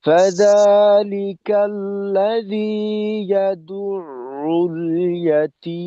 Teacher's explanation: দালের পেশের জন্য তো আমরা ঠোঁট গোল করব, বাকি আইনের উচ্চারণের প্রথম অংশে ঠোঁটটাকে যথাসম্ভব একটু টান টান খুলে রেখে আওয়াজটাকে প্রকাশ করতে হবে